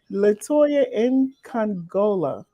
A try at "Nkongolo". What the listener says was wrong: Well, the N is silent, but you were almost there. You've come closer than most people have. It's Congolo. Congolo. The N is silent.